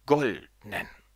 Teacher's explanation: jetzt einfach mal ein Adjektiv raus und zwar das Adjektiv goldenen es hat keine Vorsilbe und deswegen wird es auf die erste Silbe betont